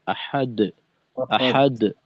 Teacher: আর আল ডালের কলকলাকে, ওই ফিরতি আওয়াজটাকে আর একটু ক্লিয়ার করতে হবে